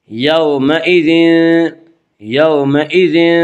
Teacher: واولین کو نرم آواز کے ساتھ جلدی پڑھیں گے